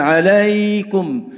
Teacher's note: Di antara kesalahan pengucapan huruf ya adalah ketika dia bersifat layyinah ini tidak dibedakan dengan ya yang madiyah, yang panjang. Maka salah kalau jika membaca mad layyinah atau ya yang layyinah dibaca dengan mad panjang atau ya panjang